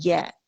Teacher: या कहाँ है, जबान के दरमियानी हिस्से पे